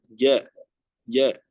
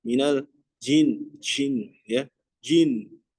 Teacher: Kemudian huruf J ya, jim atau huruf J di sini ya ee di ee makhrajnya itu berada di tengah-tengah lidah ya